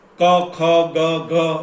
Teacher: ક, ખ, ગ, ઘ તો ગળામાંથી નીકળે